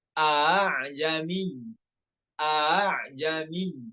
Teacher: Dua-dua hamzanya nggak boleh tahqiq. Hamzah yang pertamanya tahqiq, yang hamzah keduanya tashil.